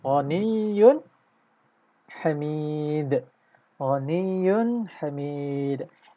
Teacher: Baris tanwin dhammah yang ada dua baris. Seolah-olah huruf ya berbaris dhammah dan adanya tambahan nun sukun di sini. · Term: dhammatain